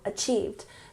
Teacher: Emphasize the second syllable, achieved.